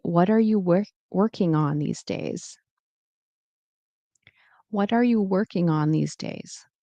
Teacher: If I wanted to sound more professional, I will probably keep the G in here and say, what are you working on these days?